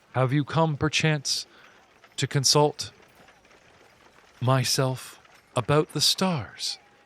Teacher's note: In an airy, breathy voice